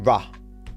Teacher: So I can do a rah, when my tongue like bunches up